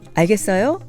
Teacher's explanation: For the polite informal style, you just need to raise the intonation at the end.